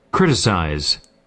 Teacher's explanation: with a stress on the first syllable in American English